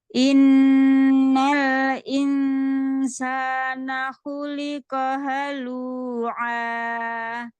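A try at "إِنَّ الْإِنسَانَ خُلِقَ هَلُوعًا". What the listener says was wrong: Tapi jangan kepanjangkan matibatnya. 2 harokat saja kepanjangan itu. Tadi itu 3, Insya Allah. Dua. Remadu tobi'i 2 harokat.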